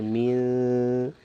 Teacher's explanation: the soft light gunna, where majority of the sound is from the nasal passage, the nose, and not necessarily the noon sound, but no more of the nose sound. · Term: soft gunna